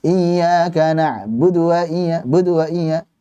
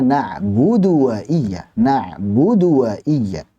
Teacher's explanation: Jangan sampai iyyaka na'budu wa iyya, budu wa iyya. Jadi terlalu cepat dan mengurangi kadar daripada dhammah tersebut.